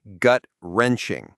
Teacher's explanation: It's not wa-wrenching, it's just wrenching. The stress is on the first syllable of each part, gut-wrenching.